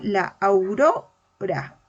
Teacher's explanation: no está la mayor fuerza de voz al inicio sino en el medio